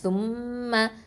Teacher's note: மீம்ல ஷத்தா இருக்குது அப்போ இது அக்குமல் குன்னா முழுமையா குன்னா கொடுக்கணும் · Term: அக்மல் குன்னா